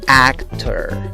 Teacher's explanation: Luego tienes el sonido de una K, el sonido de una T, el sonido de la vocal schwa, aquella débil que no es ni A, ni E, ni O, que se pronuncia A, y luego el sonido de una R. Como ves, la fuerza de la voz va en la primera sílaba, yendo de izquierda a derecha.